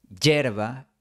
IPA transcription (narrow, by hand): 'ɟʝeɾ.βa